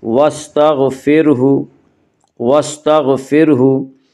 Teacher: غین کو پر پڑھیں گے، غین حروف مستعلیہ میں سے ہے